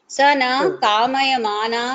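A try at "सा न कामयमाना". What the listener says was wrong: నా దీర్ఘం పెట్టకు. నా కామయమాన, నా అని దీర్ఘం ఉందా? ఎందుకు లేదంటే అక్కడ నా అంటే లేదు అని అర్థం. నా కామయమాన అంటే కామ అంటే కోరికలేమి లేకుండా అన్నదానికి అక్కడ సంస్కృతంలో దాన్ని అలా వేడిగా చెప్తారు, కానీ అంటే చూపిస్తారు, కానీ నా కామయమాన అని చదివితే దాని అర్థం క్లియర్ గా వస్తుంది.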